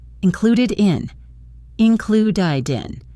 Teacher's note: The final did sound of included flows right into in, creating the sound died in.